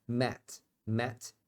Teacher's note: o símbolo para esse som que não tem em português então não é a e não é e é no meio disso você abre a boca para falar um a só que você